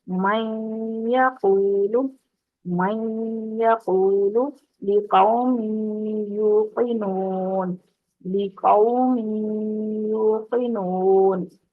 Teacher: زبان کو یا سے نکلنے کی جگہ پر لگا کر نون کی ادھوری سی آواز کو ناک کی جڑ سے نکالتے ہوئے غنہ کی ادائیگی کی جاتی ہے. یعنی آپ یا کی مخرج سے تھوڑی سی زبان پیچھے رکھیں گے، جیسے سوری نون کی آواز نون کے مخرج سے تھوڑا سا پیچھے رکھیں گے زبان کو.